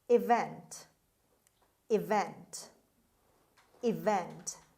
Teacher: The stress is on the second syllable on V sound, on V. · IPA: /ɪˈvent/